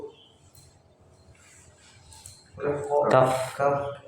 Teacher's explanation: makhrajnya keluar dari pangkal lidah bertemu dengan langit-langit yang keras